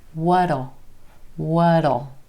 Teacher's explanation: we don't what will be comes what Oh what'll notice how that T at the end of what becomes a flap T